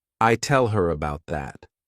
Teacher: There is no stress in every single word. So, when these words go unstressed, people tend to just omit the letter H and the sound that it corresponds to